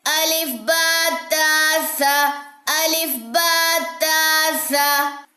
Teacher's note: سا میں سیٹی نہیں ہوتی، اکثر لوگ اس کو پڑھتے سہ، سہ. یہ سہ نہیں ہے، یہ سا ہے.